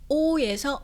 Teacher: 중국어에서는요. 어로 살짝 넘어가는 발음이에요. 그렇기 때문에 입 모양도 처음에는 오로 시작해서 끝날 때는 약간 으어라는 소리에 가깝게 낸다는 거죠.